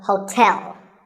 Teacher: there are two syllables like the english word tell as in tell me the stress is on the second syllable